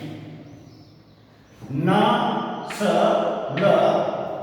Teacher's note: न स ल ये तीनों ही हिंदी में वर्तस्य ध्वनियां हैं, जबकि संस्कृत में ये दंत्य ध्वनियां थी।